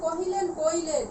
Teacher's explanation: এখান থেকে বাদ পড়লো হ, এটা হ ধ্বনিটি বাদ গেল, কোনো স্বরধ্বনি বা স্বর কিন্তু এখানে বাদ পড়েনি। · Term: হকার লোপ